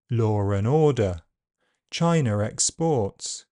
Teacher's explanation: occasionally, R is pronounced in connected speech where it is not written. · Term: intrusive R